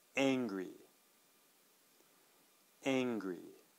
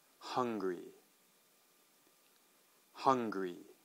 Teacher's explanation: We have the kind of the flat A sound in angry and flat U sound in hungry.